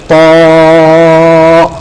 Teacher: উচ্চারণ করতে থেকে জিহ্বার আগা, উপরে দাঁতের গোড়া, জিহ্বাটা মোটা করে বলতে হবে, ত। ক্লিয়ার?